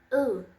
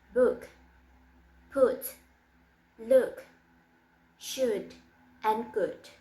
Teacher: Lace of articulation is near close back rounded and manner of articulation is short vowel. For example, book, put, look, should, and good.